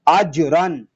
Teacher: جیم ساکن ہے اس لیے اس کو ادا کرتے وقت کلکلا خوب ظاہر کریں گے. اجرن، اور را اس لیے پر ہے کہ را کے اوپر دو زبر کی تنوین آ گئی ہے.